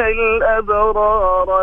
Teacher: الابرار لم تاخذ حقها من الترقيق